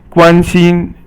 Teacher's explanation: 关 心 is all first tone, and it means to be concerned about someone.